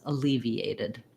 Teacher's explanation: when I go from EA, you can hear there's a little bit of a yuh sound in there. It's not written in because I just naturally get EA.